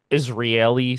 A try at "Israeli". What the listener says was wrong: You're throwing in an extra A somewhere. there's an extra R or like another vowel somewhere that you're throwing in. Israeli, not Israeli.